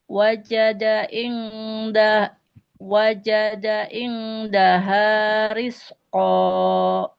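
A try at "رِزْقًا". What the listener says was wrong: Tidak ris, ini huruf zai. Tahan aliran nafasnya. Jadi tidak jadi sin ya. Riz, mirip Z. Rizqo. Rizqo. Riz.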